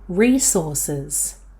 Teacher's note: This word is mostly pronounced with the first syllable stressed. Some people will stress the second syllable when using it as a verb, but most people will stress the first syllable for both the noun and the verb.